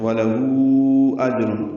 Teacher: آگے حمزہ آنے کی وجہ سے اس پہ مد آئی ہے، مد منفصل بھی کہتے ہیں